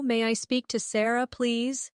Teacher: Notice how may I sounds like maya in fast speech.